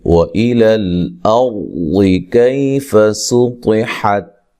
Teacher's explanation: کریں گے، کئی یا لین ہے، طا کو موٹا پڑھنا ہے، سین کو باریک پڑھنا ہے سیٹی کے ساتھ